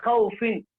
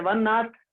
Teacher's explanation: واو متحرک اور واو لین کا مخرج دونوں ہونٹ جبکہ پورے نہ ملے